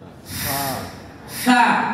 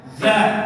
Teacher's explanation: Huruf Fa pita suaranya tidak getar. Huruf Z getar.